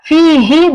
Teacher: the ha is from the bottom of your throat. Also make sure not the ha but the ha, right?